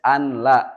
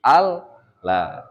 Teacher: nun mati bertemu lam, maka diidghamkeun sami, nunnya jadi hilang, lembur karena huruf lam. · Jadi nunnya melebur, dia masuk ke huruf lam.